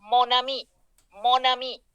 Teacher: Hacemos la unión consonántica. Mon ami, como si fuera una sola palabra.